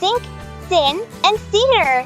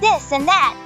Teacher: the tip of the tongue against the upper teeth and allowing air to flow through without using the vocal cords. A common example of this sound is the th in words like think, thin, and theater.